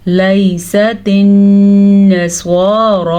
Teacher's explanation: नून पे शद है तो गुन्ना करना लाजमी है